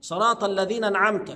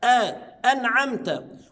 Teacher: هنا همزه قطع ا يبقى لابد اظهر الهمزه